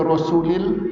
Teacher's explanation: Rasulullah. Tapi kalau bunyi sebelumnya bagi bawah, maka la ni nipis. Sebab tu kita baca dia Rasulil.